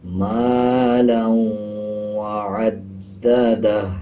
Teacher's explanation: اب جیسے واو کے اوپر شد ہے اور لام کے اوپر 2 زبر ہیں تو لام کو واو کے ساتھ ملاتے ہوئے غنہ کریں گے